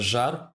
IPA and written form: ʒar (жар)